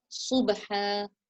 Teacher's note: It's a whistling sound, but not quite a tha. You don't make it into a tha. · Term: sad